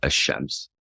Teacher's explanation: the Arabic word ash-shams, meaning the sun, is actually pronounced without the L sound, ash-shams, because the following letter, asheen, the SH letter, is a sun letter.